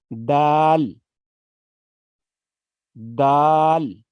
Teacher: یہ زبان کی نوک جب ثنایا علیہ کی جڑ سے لگے تو دال ادا ہوتا ہے